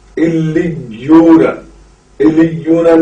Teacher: لام کے ساتھ یا کو قوت کے ساتھ ملا کر پڑھیں گے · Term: تشدید مع تشدید